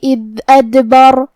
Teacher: حرف دال کی ادائیگی زبان کے سر اور اوپر والے دانتوں کے اندرونی کناروں سے ہے، جو کہ اس پہ جزم ہے تو ہمیں حرف دال کو ظاہر کرنا ہے.